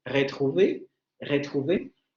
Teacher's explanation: el sonido uvular aproximante sonoro